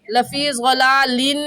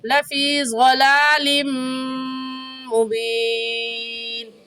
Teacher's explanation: ضلال میں تنوین کے بعد حروف یرملون میں سے میم آ گیا ہے، تو یہاں پر ہم غنہ کرنے کے ساتھ ساتھ ادغام بھی کریں گے، یعنی لفی ضلال کہنا غلط ہے اور صحیح ہے لفی ضلال مبین۔